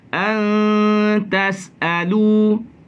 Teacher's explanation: Kita baca dengan nipis dengunya.